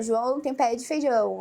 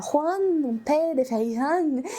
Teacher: No espanhol, nada nasal, é uma língua bem aberta